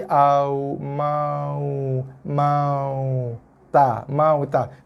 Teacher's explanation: Bibir tak bersentuh. Keluar daripada dua bibir tapi tak ada sentuhan antara dua bibir. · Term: huruf waw